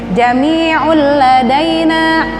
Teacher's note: tanwin bertemu dengan lam, idgham bila huna, masuk tapi tidak dengung